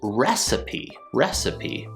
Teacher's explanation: if you say it slowly we get a se sound however when we say recipe quick we end up getting the schwa sound instead